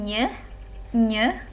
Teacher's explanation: Kemudian ada bunyi nye, ini melibatkan palatal.